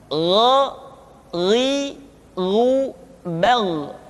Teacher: Diucapkan seperti kita mengucapkan huruf Kha, yaitu diucapkan dari pangkal tenggorokan kita. Yang membedakannya adalah Kha mengalir nafas dan Gha tidak mengalir nafas. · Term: huruf Gha